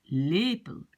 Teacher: Ok, donc par exemple, j'ai le mot lepel. Sur lepel, l'accent est sur le premier E. L'accent est ici.